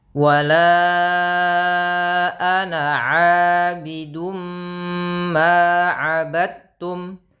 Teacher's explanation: Maka abidum langsung ya, bibirnya dirapatkan abidum ma. Kemudian idghamnya idgham bi gunnah, idgham yang disertai dengan gunnah penahanan. · karena bertemu dengan ma langsung dimasukkan tanwinnya, suara nunnya hilang sehingga diganti dengan mim. Maka abidum langsung ya, bibirnya dirapatkan abidum ma.